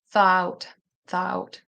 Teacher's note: for American English, which is the English that I speak, we do not add the intrusive R.